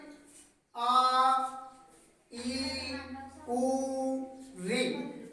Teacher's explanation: जब हमें आ, ई, उ, री, जब देखिए ध्यान से ए एक मात्रा का समय, आ दो मात्रा का समय लगा, दुगुना। इससे मूल स्वर से दुगुना समय दीर्घ स्वर के उच्चारण में लगता है। ई, उ, री, यानी ऐसे वर्ण जिन्हें बोलने में दो मात्राओं का समय लगे वो दीर्घ स्वर के नाम से जाने जाते हैं।